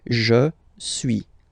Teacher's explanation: suis, as you've been noticing, you don't pronounce the final S